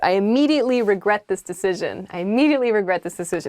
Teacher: you can say i immediately regret this decision but with kind of like a flat tone to it